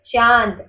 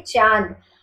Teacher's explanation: चांद आपके नाक और मुख दोनों से हल्की सी वायु प्रवाह होगी, तो इसे हम बोलते हैं अनुनासिक।